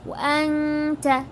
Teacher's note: this is ikhfa, so we are stretching for 2 seconds